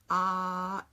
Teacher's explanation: do you feel a buzzing yes because my vocal cords are vibrating that buzz is produced by the vocal cords so ah yes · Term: motor on